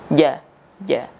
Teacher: ja itu tempat keluarnya ada di tengah lidah bertemu dengan langit-langit atas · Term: huruf jim